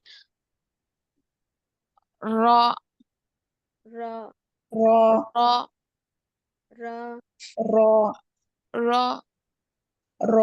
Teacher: tip of the tongue क्या होंगी ऊपर तालू को लगेंगी मा कबल तालू को लगने से अदा होंगी र र र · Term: र का मखर